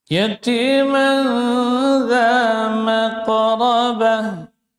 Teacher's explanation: Yatiman dha panjang 2 harakat. Ya, ujung lidah di ujung gisri atas. Huruf rakhawah dan jar. Maqo, mimnya tipis yang tebal, huruf qafnya.